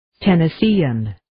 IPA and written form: ,tenɪ'siːən (Tennessean)